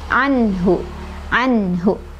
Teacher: nunnya dibaca jelas sesuai dengan harokat huruf nun tersebut. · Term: idhar